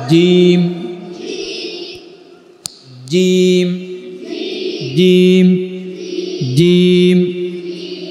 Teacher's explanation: জিম, জিহ্বার মধ্যখান উপরে লাগিয়ে